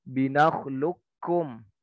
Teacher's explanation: Jadi huruf kafnya, kofnya nggak ikut, kofnya dianggap hilang. Ada tapi tidak dianggap. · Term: idgham kamil